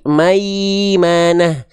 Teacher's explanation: Ketika tengah lidah diangkat, keluarlah bunyi vokal i yang kita maksud.